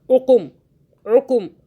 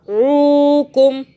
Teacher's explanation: عو جو ہم نے کھینچا کیونکہ واو آ رہا ہے، حروف لین ہے، ہم نے ایسے نہیں پڑھا عقم عقم، ایسے نہیں پڑھا، ہم نے پڑھا عوکم، کھینچ کے پڑھا۔